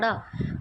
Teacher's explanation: ਪਹਿਲਾਂ ਤਾਂ ਤਾਲੋ ਨੂੰ ਛੀ ਛੂਆ ਆਪਣੀ ਜੀਭ ਨੇ ਫਿਰ ਇੱਕ ਦਮ ਜੀਭ ਬਾਹਰ ਨੀਚੇ ਆ ਗਈ ਹੈਹਨਾ ਤਾਂ ਤੁਸੀਂ ਬੋਲ ਕੇ ਦੇਖੋ ੜਾੜਾ ਤਾਂ ਉਹ ਹੁੰਦੀ ਹੈ · ਇਸ ਦੇ ਉਚਾਰਨ ਸਮੇਂ ਜੀਭ ਜਿਹੜੀ ਹੈ ਤਾਲੂ ਨੂੰ ਛੂ ਕੇ ਫਿਰ ਇੱਕਦਮ ਝਟਕੇ ਨਾਲ ਹੇਠਾਂ ਆਉਂਦੀ ਹੈ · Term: ਫਟਕਵੇਂ ਵਿਅੰਜਨ